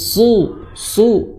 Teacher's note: suara desiran ya dari gigi bawah itu disertai dengan ketebalan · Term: shad